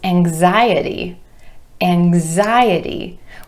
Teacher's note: Anxious becomes anxiety, anxiety, with stress shifting to the I vowel sound right before our suffix